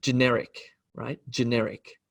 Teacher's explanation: Generic, generic, with the emphasis or the word stress on the n sound.